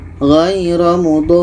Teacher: Kita panjangkan 6 harakat. Ro ini pendek maka kita matikan, jadi dapat syaddahnya saja.